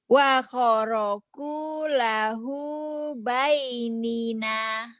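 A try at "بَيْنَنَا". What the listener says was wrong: Bukan Bani bukan Bay. Bani. Bani.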